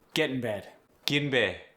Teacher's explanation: Let's keep it relaxed for the e, which also gets drawn out.